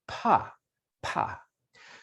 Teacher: your vocal cords are open not vibrating at the beginning of pa